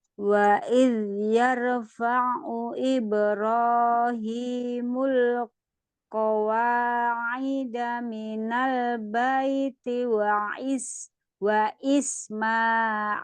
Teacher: Waid yarfa faunnya jangan panjang tidak ada madnya